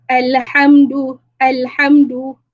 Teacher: Jangan ada lantunan pada huruf lam itu. Sebab lam bukan huruf melantun.